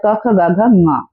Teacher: जैसे क वर्ग का 5वां लेटर होता है क ख ग घ ङ, तो ङ जो होता है कंठ प्लस नासिका से बोला जाता है।